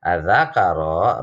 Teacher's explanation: Di sini ada alif lam syamsiah. Ya, alif lamnya di depannya ada zal. Namun alif lamnya nggak terdengar jelas.